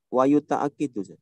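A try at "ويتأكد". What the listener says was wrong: Ka sebelum akhir fathah.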